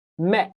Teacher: The T here uh if I say the word me T by itself, it sounds like met. The T is a stop and you can't hear it.